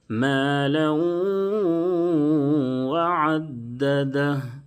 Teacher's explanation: غنہ کے ساتھ ادغام ہوگا، تنوین کو واو سے ملاتے ہوئے غنہ کریں گے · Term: ادغام مع الغنہ